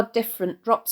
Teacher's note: the plosive alliteration of the d sound in different drops